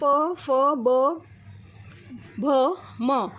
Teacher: जब भी बोलते हैं तब हमारे ओस्ट का प्रयोग होता है हमारे दोनों होठ आपस में मिलते हैं तभी यह वर्ण निकलता है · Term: ओट व्यंजन, ओष्ठ व्यंजन